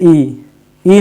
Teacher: हल्का सा खुलना बस बंद ही मान के चलिए जैसे ई ई में ज्यादा मुख नहीं खुलता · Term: समृत